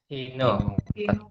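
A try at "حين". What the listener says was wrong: Ya, Hina. Tetap itu. Tidak ada dibaca Hinu, tidak ada baca. Kecuali ada huruf jar di muka. Karena dia zarab.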